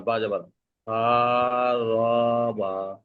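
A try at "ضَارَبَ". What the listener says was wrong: হ্যাঁ রটা টান হবে না সার রবা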